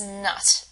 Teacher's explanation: you actually Force air through your nose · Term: nasal sounds